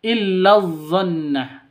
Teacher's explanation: Illa ini pendek karena langsung masuk ke zat yang bertasydid